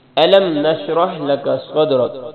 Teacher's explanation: صاد کو موٹا پڑھنا ہے